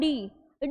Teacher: बोलने में क्या हो रहा है हमारा जो जीभ है वो थोड़ा सा मुड़ रहा है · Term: मुर्धन्य